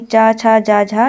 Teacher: इन व्यंजनों के उच्चारण में वागांगों का स्पर्श भी होता है और प्रश्वास वायु को संघर्ष भी करना पड़ता है। हिंदी के जो चा वर्ग होते हैं, चा वर्ग यानी चा छा जा झा, ये चारों ही स्पर्श संघर्षी व्यंजन हैं।